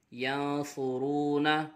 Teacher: یا نون زبر ین، صاد پیش صو، ینصو، را واو پیش رو، ینصرو، نون زبرنا، ینصرون نون ساکن کے بعد حرف اخفا میں سے صاد آ رہا ہے، اخفا ہوگا، غنہ کر کے پڑھیں گے۔